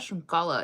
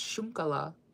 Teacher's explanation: Like the stress is on the U.